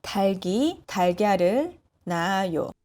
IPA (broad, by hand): 달기 달갸를 나아요